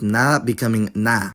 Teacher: when [ð] is between two of the same vowel and disappears, that would result in a long vowel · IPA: [naː]